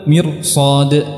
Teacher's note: Ketika depannya ada huruf isti'la maka ra-nya juga menjadi tebal, mirsad.